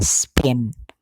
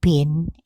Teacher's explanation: him the difference in pronunciation lies in what is called aspiration the P in spin is not followed by any puff of air